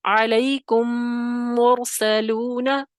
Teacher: ایک میم کو دوسرے میم میں ہم نے کیا کیا، ملاتے ہوئے غنہ کر دیا